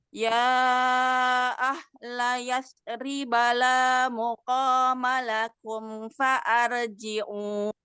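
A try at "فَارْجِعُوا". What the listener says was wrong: Ini bukan fa'ar. Ya, ini kan hamzah wasol. Jadi far, ya. Farji'u.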